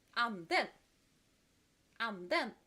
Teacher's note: the second has stronger pronunciation on the second syllable